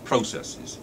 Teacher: Now the word processes is what we call a trochee, because it's the opposite of an iamb, or an iambus, you can say either. Processes, the stress is on the first syllable, processes, and you've got two quiet syllables after that.